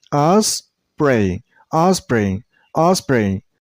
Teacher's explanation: I'm not pronouncing O. Your mouth shouldn't make a round shape.